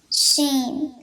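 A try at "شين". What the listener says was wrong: There's a ya at the end, at the middle. Sheen.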